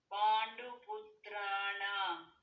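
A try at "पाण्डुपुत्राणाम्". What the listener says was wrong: ಪುತ್ರಾಣಾಂ ಮಕಾರ ಕೂಡ ಹೇಳಬೇಕು.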